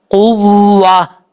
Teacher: آخر میں ہا کا ساؤنڈ آئے گا کیونکہ تا گول تا ہے. یہاں پہ جب وقف کریں گے تا ہا سے بدل جائے گا.